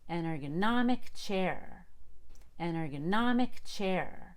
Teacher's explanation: i have to unstress ergon and i don't release the ball till i get to om